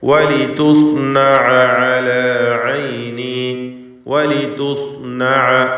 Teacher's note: വലിതുസ്നഅ അലാ ഐനി, വലിതുസ്നഅ, ഇതിൽ സ്വാദിന് മാത്രമാണ് തഫ്ഖീം, എന്നാൽ താഇന് തഫ്ഖീം വരരുത്. വലിതു എന്ന് ത്വാ പോലെ ആയിപ്പോരുത്.